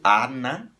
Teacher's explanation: Nesse caso, o A soa aberto, ana, porque o N está para o segundo A.